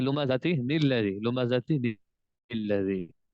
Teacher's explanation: اس چھوٹے نون کو نون قطنی کہتے ہیں، اس کو ملا کر پڑھتے وقت نون بھی پڑھیں گے۔